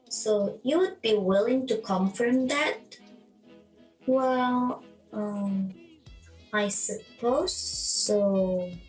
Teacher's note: The last pattern is fall-rise intonation. Fall-rise intonation is used to show hesitation or reluctance.